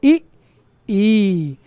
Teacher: जब बोलते हैं तो जुबान का जो अगला वाला भाग है उसका प्रयोग होता है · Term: अग्र स्वर